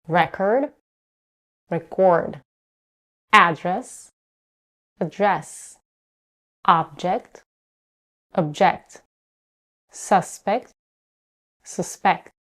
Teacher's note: When the word is a noun, the stress is on the first syllable. When it's a verb, it's stressed on the second syllable.